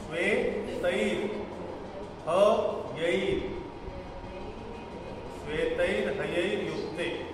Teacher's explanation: श्वेमध्ये एकार आहे आणि दुसऱ्या शब्दामध्ये त मध्ये ऐकार आहे